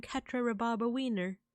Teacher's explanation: he doesn't quite say wiener like a wiener dog, but he elongates the I